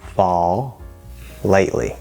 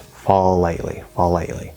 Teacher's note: we're going from that dark L, the half L vowel sound, into the full L